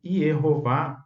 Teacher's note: Yeho é uma sílaba aberta, pretônica, com vogal longa. E Vá, que é a segunda sílaba, é uma sílaba tônica, aberta, com vogal longa.